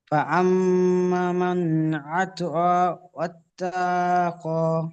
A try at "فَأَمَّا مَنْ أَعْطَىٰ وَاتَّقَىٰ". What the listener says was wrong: না, ওয়াত্তা টান হয়ে যাচ্ছে, ওয়াত্তাক। فأما من أعطى واتقى।